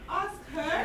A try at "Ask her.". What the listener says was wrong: No, not rising. Ask her. Falling intonation.